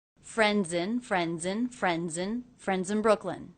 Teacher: the ending Z sound of friends linked into the beginning vowel of the next word.